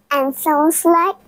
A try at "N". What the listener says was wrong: না এটাতে ঠোঁট খোলা থাকবে দেখি জিহ্বাটা উপরে তালুর সাথে লাগবে এই যে দেখো জিহ্বাটা এখানে লাগাবে দেখি জিহ্বাটা উপর দিকে